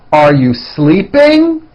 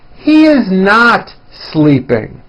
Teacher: notice how my voice goes up at the end of a question like this · notice how my voice comes down at the end of a sentence that is not a question like this